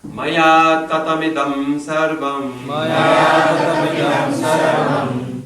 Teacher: Notice I didn't stop after tatam, because it's all short syllables. Tatamida, all short.